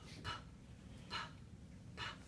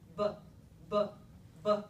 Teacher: The only difference between those two sounds is whether or not I turn my vocal folds on before I let the air out of my mouth.